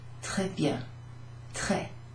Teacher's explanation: It's sort of E, sort of shorter and flatter.